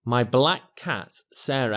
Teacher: you can see that common C Sound is only sounded out once